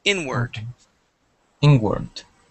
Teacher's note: the stress goes at the beginning of the word inward